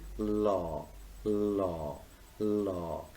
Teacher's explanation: the first sound law is lateral liquid because it is created almost in the region of alveolar ridge